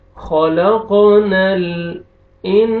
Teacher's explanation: नून साकिन के बाद हरूफ इख्फा में से सीन है, आपने नोज में साउंड लेके जाएंगे। इंसान अलिफ मद्दा, अलिफ से पहले जबर, सीन को आपने खींचना है।